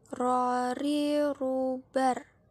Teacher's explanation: pengucapan huruf Ra dengan cara menyentuhkan lidah terdepan